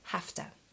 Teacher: But HAVE TO we will almost always shorten to HAFTA in spoken English.